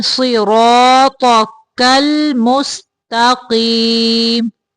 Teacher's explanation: صاد کو موٹا، را کو بھی زیادہ موٹا پڑھنا ہے اور تو کو بھی موٹا پڑھیں گے، کاف کو باریک پڑھیں گے.